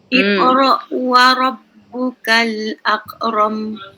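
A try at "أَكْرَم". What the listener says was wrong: Nipis. Akram. Nipis. Jangan tak nipis.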